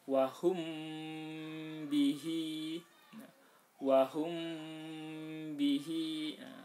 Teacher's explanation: dibaca samar dan mendengung ya dengungnya di bibir menemuinya karena ikhfa ikhfa itu artinya samar syafawi itu bibir samar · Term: Ikhfa Syafawi